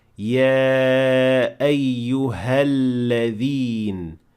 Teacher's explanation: The next word is الذين, and we can directly see that this word starts with Hamzat al-Wasl, and since we'll be connecting these 2 words here, this alif will completely disappear and we will say يا أيها الذين without mentioning any Hamza whatsoever at the beginning of the word